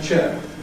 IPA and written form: ʧeː (chair)